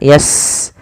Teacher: Sin punya sifat namanya hamas, alirkan nafasnya